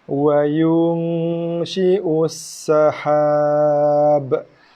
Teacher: Wa yu satu harakat, nun mati bertemu dengan shin, didengungkan pada nun, yunshi'us ada desiran pada sin, sabdu, ussahab. Kita wakaf pada huruf ba. Jadi qalqalah b.